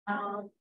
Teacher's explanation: Pangkal lidah bertemu lelangi belakang. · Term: qalqalah